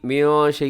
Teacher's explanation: نون ساکن ہے، نون ساکن کے بعد شین ہے تو یہاں پہ کیا کریں گے، اخفا